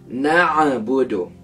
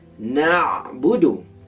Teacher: huruf ain di dalam kalimah ini tidak dimatikan dengan sempurna hingga muncul selepasnya bunyi tambahan